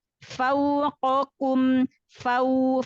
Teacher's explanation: lin yang waw sukun sebelumnya fathah, sempurnakan monyongnya ya